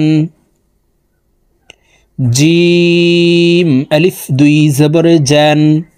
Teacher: জিম হরফের উচ্চারণ জিহ্বার মধ্যখান থেকে পড়তে হবে